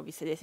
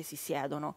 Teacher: Dove l'accento cade sulla radice, allora nella radice c'è il dittongo. Se l'accento cade sulla desinenza, il dittongo non c'è più, non si forma.